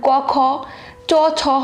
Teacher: অঘোষ বর্ণ প্রতি বর্গের প্রথম ও দ্বিতীয় বর্ণের উচ্চারণের সময় কণ্ঠস্থ স্বরতন্ত্রের কম্পন হয় না বলিয়া কণ্ঠস্বর মৃদু থাকে, এজন্য এই বর্ণগুলিকে অঘোষ বর্ণ বলে।